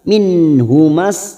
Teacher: nun sukun bertemu ha Idhar halq dibaca jelas